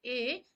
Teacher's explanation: ए जो कि कंठ और तालु के मिलने से बोला जाता है। दीर्घ है और अर्ध संव्रत कहलाता है। · ऋषि का है, आप ध्यान रखेंगे, मूर्धा इसका उच्चारण स्थान है और जो कि ह्रस्व स्वर के अंतर्गत आता है। ए, जो कि कंठ और तालु के मिलने से बोला जाता है, दीर्घ है और अर्ध संवृत कहलाता है